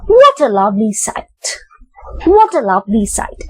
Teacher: a lovely side there again um it is an exclamation and after what which is in the high pitch you move to low pitch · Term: falling intonation